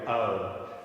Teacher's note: that's a diphthong two vowels happening at the same time